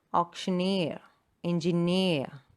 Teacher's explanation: So the stress is on the last syllable.